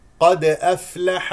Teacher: لدينا دال ساكنه مقلقله القاف مستعل افلح الفاء فيها همس اعطيها حقها من الهواء لكي تسمع الفاء